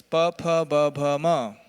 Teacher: And now no more tongue, no more teeth, only lips.